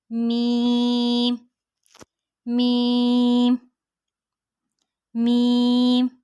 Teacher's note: दोनों होंठों के खुश्क हिस्से से अदा होती है मीम।